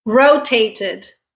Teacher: We add id because the verb ends on a t sound.